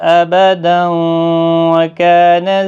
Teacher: تنوین کے بعد جب بھی یرملون میں سے کوئی حرف آتا ہے، جیسے یہاں واو ہے اور یہاں یا ہے، تو وہاں پر ادغام مع الغنہ ہوتا ہے، گنہ کے ساتھ پڑھا جاتا ہے